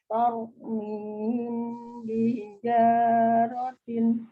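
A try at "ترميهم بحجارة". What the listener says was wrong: Ya, masih kurang mimnya ya. Tarmihim bihijaratin. Jadi untuk ngerem ngetrilnya huruf pro itu pakai bibir ya, maksudnya ditahan. Kalau masih tar, itu belum ditahan. Tau, tau, mi, tau. Kayak orang cadel aja. Tau, mihim bihijaratin.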